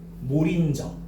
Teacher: 그래서 저거는 왜 몰인정이 된 거야? 밑에 있는 리을 받침이 뒤로 넘어가는 연음 현상이 나타난 거야. 그래서 몰인정이 된 거고 옆에 봐봐.